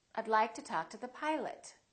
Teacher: the O in Pilot becomes uh